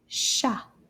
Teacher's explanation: These 2 letters make the sh sound, and the T is quiet. Shh. We don't say the T at the end of this word.